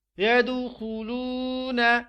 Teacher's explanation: يدخلون، یہاں پر ہم واو کو کھینچیں گے لام کے ساتھ. يدخلون، کیونکہ واو ساکن ہے اور واو سے پہلے پیش ہے، اس کو ہم ایک الف کے برابر کھینچتے ہیں